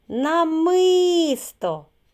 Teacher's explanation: намисто куди був наголос на другий склад